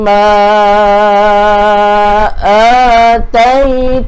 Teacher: bila matikan dengan nun sabdu, pastikan dengung dua harakat. Nun yang bertanya sabdu ni kena ada dengung, nama dia wajibal ghunnah.